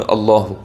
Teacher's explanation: തഫ്ഹീമിന്റെ കനപ്പിച്ചു പറയേണ്ട ലാമാണ് അല്ലാഹുവിലെ ലാം